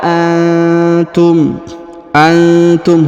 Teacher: huruf nun sukun bertemu huruf ta ya, maka didengungkan dan disamarkan.